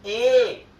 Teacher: जैसे मान लीजिए हम कंठ ताल्य वर्ण की बात कर रहे हैं, इसके लिए कंठ भी चाहिए और तालु भी चाहिए। कंठ का भी आवाज निकलता कंठ से भी और तालु से।